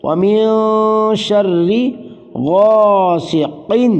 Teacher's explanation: غا غین کے بعد الف مدہ، غین کو لمبا کیا